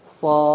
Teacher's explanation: Harus ada dalnya. Kalau dal itu pernah dengar qalqalah ya, harus memantul.